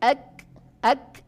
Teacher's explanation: kaf tidak boleh memantul. Kaf hanya mengeluarkan nafas. Ak, tetapi tidak memantul.